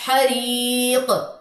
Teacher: حریق، یا مد ادا کرنے کے بعد کلکلا کرنا ہے. اکثر لوگ ایسے پڑھتے حریق، نہیں، حریق.